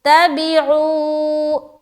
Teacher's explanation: تا، بازر بھی، عین واو پیش عو، تبعو، یہاں پر دیکھیے واو ساکین ہے نا، اور اس سے پہلے کیا ہے، پیش ہے، تو یہاں پر واو مدہ ہو گیا، ایک الف کے برابر کھینچنا ہے